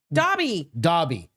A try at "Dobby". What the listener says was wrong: You're saying Tobby.